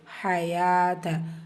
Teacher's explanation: ஹயாத்த ஹா ஃபத்ஹா லைட்டாக உச்சரிக்கணும்